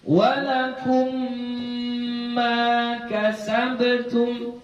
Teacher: Mutamatsil, arti mutamatsil itu semisal, sama, nggak ada bedanya mim dengan mim gitu. Nah, idgham mutamatsil itu nanti ada yang digunnah, ini dia dibaca dengan dengung. Jadi kita baca walakum, kemarin dengung dia bilang panjangkan saja bacaannya, jangan menanggung, jangan dibaca walakum ma kasabtum, itu menanggung. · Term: idgham mim